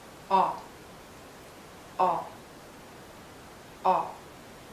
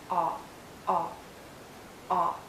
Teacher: it's a short sound and a very open and rounded sound make your lips rounded and lower your jaw